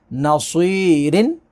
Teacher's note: वलियों, वलियों, वला, लाम को खींचेंगे, अलिफ से पहले ज़बर है। नसीरिन, स्वाद को पुर पढ़ेंगे, या साकिन से पहले ज़ेर है तो या मद्दा होगी।